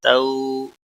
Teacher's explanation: واولین ہے، تھوڑا نرمی کے ساتھ کھینچ کر ادا کریں گے